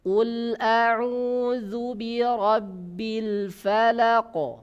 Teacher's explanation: Ketika qaf ini mati, maka dia mengeluarkan suara pantulan.